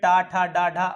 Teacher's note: हमारी जीभ जो है हल्का सा आगे की तरफ मुड़कर तालू के आगे वाले हिस्से में टच करती है। और उसको कहा जाता है मूर्धा। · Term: मूर्धन्य